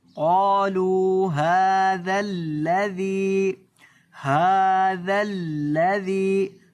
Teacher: ہا کو تھوڑا سا لمبا کریں گے ایک الف کے برابر